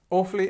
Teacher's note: we don't have this prefix, so it starts, the stress is at the beginning